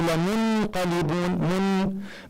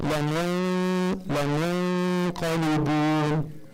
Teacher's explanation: say noon without the tongue touching the top of the mouth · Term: ikhfa